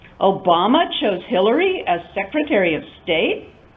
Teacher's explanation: Rising. Rising. I'm expressing surprise.